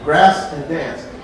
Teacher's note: The southern drawl is explained by linguists as one of two things: diphthongization or triphthongization. The use of two vowel sounds or even three vowel sounds, where other dialect regions just put one.